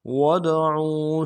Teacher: صَادِقِينَ، وَادْعُوا، واو کو دال کے ساتھ ملانا ہے، ود اور دال حرف قلقلہ میں سے قلقلہ کریں گے